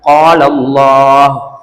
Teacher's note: இந்த அல்லாஹ் வார்த்தையை வல்லினமா உச்சரிக்கணும் வாய் நிறமா சொல்லணும்